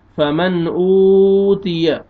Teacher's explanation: نون ساکن کے بعد حروف حلقی میں سے حمزہ آ رہا ہے، اظہار کریں گے